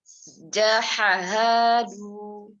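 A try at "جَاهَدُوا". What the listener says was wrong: Bukan jaha. Ini bukan jahaha. Ini ha. Ini cara penulisan Usmani. Jadi hanya begini. Terus ini nih artinya alif yang bantuan aja. Jadi hanya panjang. Ini cara nulisnya beda soalnya.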